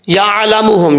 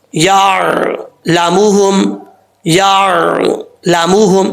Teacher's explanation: نہ ہی عین میں قلقلہ کرنا ہے اور نہ ہی عین کے اوپر زبر پڑنا ہے، عین ساکن ہے